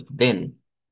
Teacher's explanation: no es la e del español, sino que es una e abierta, como la e del inglés